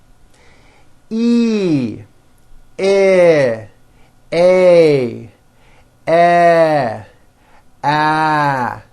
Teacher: Notice with each of these vowels, my jaw is opening a little bit more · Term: front vowels